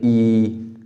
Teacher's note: तालव्य में जब ई बोलते हैं तो तालु में जीभ लगती है